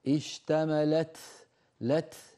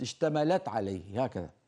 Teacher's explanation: لابد من هواء متدفق بعد التاء، لابد، هذا هو الهمس